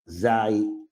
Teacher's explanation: Yeah, we're not saying, we're not like saying za yi. It's just like zay, and you kind of stop. So you make the y sound short.